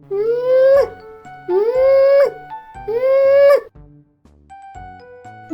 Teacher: Це дзвінкий звук. Він утворюється за участю голосу і шуму.